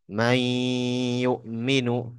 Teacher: Karena dileburkan antara nun sakinah ketemu ya. Tetapi meleburnya nun ke ya itu ada sebab karena bertemu dengan huruf ya yang dalam pembahasan idgham bi gunnah.